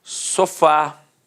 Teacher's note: Repare que a sílaba tônica é a última e é terminada de fato em A. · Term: oxítona